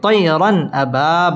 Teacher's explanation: তানভিনের বামে হামজা আসছে হামজা ইজহারের হরফ এখানে গুন্না ছাড়া স্পষ্ট করে পড়তে হবে এবং র পুর হবে তয়রান আবা বা আলিফ জবর বা মধ্য